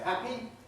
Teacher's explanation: some people say happy but they're definitely in that quality grin other people say happy with an e-like quality such as green many people use something that is intermediate between them or fluctuate